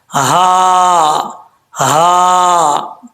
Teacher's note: وقیلا ھذا الذی، ہا جو ہے بھاری ساؤنڈ کے ساتھ پڑھا جائے گا. اس ہا کا تعلق جو ہے جس حلق سے ادا ہوتی ہے وہ حلق سینے کی طرف ہے، اس وجہ سے اس ہا کو بھاری ساؤنڈ کے ساتھ پڑھیں گے.